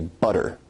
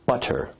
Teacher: in received pronunciation where you say butter, that involves a full T stop. · Now notice where we write it with two T's in English that your tongue is producing a tap sound there rather than a full stop or plosive sound